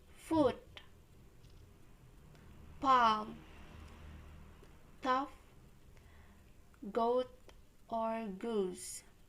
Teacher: or villain it's defining the characteristic of back vowels is that the highest point of the tongue is positioned relatively in the back of the mouth without creating a constriction that would be classified as a consonant